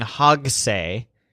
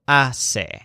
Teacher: he pronounces the word hog wrong, leaving out the H and the G, so instead of saying hogse, it sounds like ase.